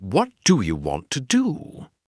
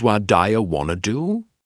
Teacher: you begin to hear that what do you want to do becomes what dire want to do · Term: connected speech